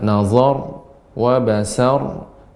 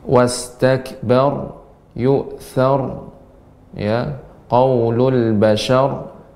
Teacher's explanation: ra yang disukunkan karena waqaf dan sebelumnya huruf yang berharokat fathah, maka dibaca dengan tebal. Dan sifat ra adalah, ya, getarannya lembut dan sedikit.